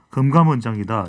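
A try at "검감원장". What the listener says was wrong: 금감, 검감 확실하게 좀 발음을 해주셔야 될 것 같아요.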